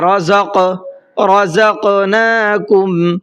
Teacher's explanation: زا کو تھوڑا سا سختی سے پڑھنا ہے اور قاف کے اندر قلقلہ کرنا ہے